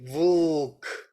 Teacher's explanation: the sound is going on the side, on both sides. · You can pronounce l as the vowel. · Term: Li